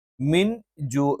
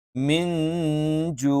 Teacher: ശേഷം ജ എന്നുള്ള അക്ഷരം വന്നാൽ ആ നൂനിനെ നമ്മൾ അവ്യക്തമായി ഉച്ചരിക്കും